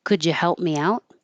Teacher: The D and the Y together make a J.